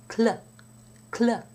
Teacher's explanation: the tongue is almost in position for the L when you release the k sound, so that the L is pronounced immediately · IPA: /kl/